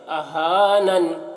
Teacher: یہاں پر وقف کریں گے تو زیر جزم سے بدل جائے گی، تو اہانن ہو جائے گا